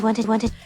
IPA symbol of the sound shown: ɪd